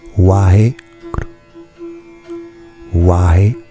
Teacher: guru, ça se prononce gru